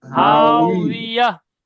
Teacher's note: হাই হাইয়া হা আলিফ জবর হা, ওয়াও জের উই, হাউই, ইয়া, আর হাউ শেষে হা সাকিন হয়ে যাবে, ইয়া, হাউ হাউ হাউইয়া। ওয়াও জের উই হবে, দুটো ঠোঁটের দুই সাইড মিলে যাবে, মাঝখান ফাঁকা থাকবে।